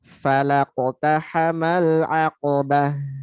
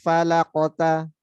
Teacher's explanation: Tapi falanya tipis ya. Masuk qafnya tebal, pantulannya tebal. Dan dia setelahnya langsung masuk ke tak setelah mantul. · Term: qalqalah